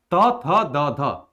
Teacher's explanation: यह दंत वर्ण है, क्योंकि जीभ जो है दांत के ऊपरी दांतों के पिछले भाग को टच कर रही है, दंत वर्ण ये माना जाता है, यानी दंत व्यंजन इसे हम लोग कहते हैं।